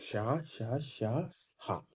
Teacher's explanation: ध्वनि को निकलने में संघर्ष करना पड़ता है और उच्चारण में थोड़ी सी गर्माहट प्रतीत होती है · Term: उष्म व्यंजन